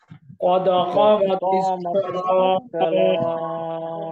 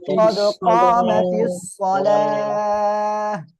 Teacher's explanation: আর এখানে গোলতা রয়েছে, অক্ফের সময় হা হয়ে যাবে।